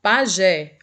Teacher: a última sílaba mais forte portanto é uma palavra oxítona